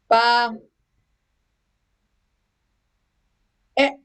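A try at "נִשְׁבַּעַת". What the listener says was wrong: No, just ignore that. That's a silent vowel under a silent letter, so you can ignore it. T. Niche ba T.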